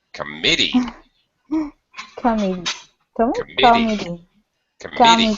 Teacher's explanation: The second syllable or middle syllable is stretched.